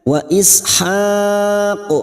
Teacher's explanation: Kita pantulkan huruf qaf yang kita wakafkan.